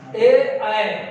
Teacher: ए, ऐ दोनों का उच्चारण आप देखेंगे कंठ और तालु। कंठ पहला स्टेशन है, तालु दूसरा स्टेशन है।